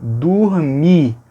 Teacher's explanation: Então o O de dormir fica com som de U. Dormir, porque tem que ficar fechadinho como o IR do final. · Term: harmonia vocálica